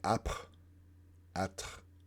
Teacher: the uvular French fricative that's unvoiced, which we know is the French R